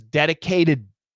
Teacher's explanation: So what we have here is the dedicate, that T becomes a flap T. And it says dedicated.